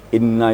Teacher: Inna itu namanya wajibul gunah wajib berdengung